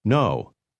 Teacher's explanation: Did your voice first drop then rise to a high level?